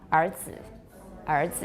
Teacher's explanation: really curl it up, it pushes your tongue down, so you end up with an ah sound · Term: retroflex